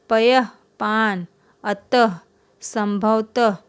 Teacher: जब हम उच्चारण कर रहे हैं तो विसर्ग का उच्चारण ह की तरह हो रहा है